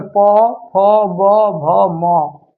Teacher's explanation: प वर्ग का उच्चारण स्थान जो है ओष्ठ होता है